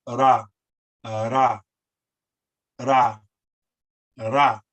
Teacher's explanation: It's like ra, ra, ra, ra, where the tongue lightly touches the roof of your mouth. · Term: rolled